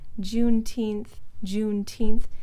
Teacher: that's got stress on both parts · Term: double stress pattern